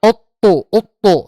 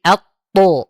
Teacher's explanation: A pas ketika menyebutkan at to, itu a-nya tipis dulu, a. Baru ke tho tebal, jangan ut to, ut to, tapi at to.